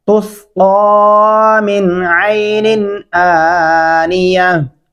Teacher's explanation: इस मिन के ऊपर भी गुन्ना नहीं होगा और इस निन के ऊपर भी गुन्ना नहीं होगा